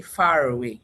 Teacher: final segment that was supposed to be in far that was not pronounced resurfaces and it now becomes a source of linking for the two words. So while I will say far, I will say far away that is linking.